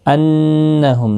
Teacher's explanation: انہم نون مشدد پر گنہ ہوگا